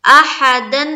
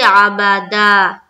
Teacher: دو زبر پر جب بھی وقف کریں گے تو ہم ایک زبر کو حذف کر دیں گے اور ایک زبر کے ساتھ الف کو پڑھیں گے. جیسے احدن سے احدا، عبادن سے عبادا.